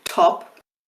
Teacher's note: Put the hand in front of your mouth and try and say it top and the T. Again, you're going to feel that puff of air. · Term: aspirated t